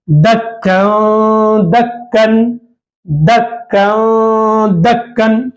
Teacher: कन बोलने से जो नून की आवाज आ रही है, ये नून की आवाज को नाक में छुपाना है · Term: इख्फा